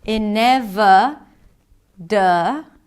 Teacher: that's a flap T, so it sounds like a D.